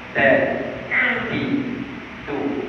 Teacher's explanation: kita tak menghasilkan angin di awal Sebab kita akan tahan angin itu daripada dia keluar. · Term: sifat syidah